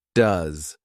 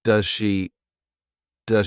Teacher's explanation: does is an auxiliary verb so we can pronounce it very quickly in an unstressed way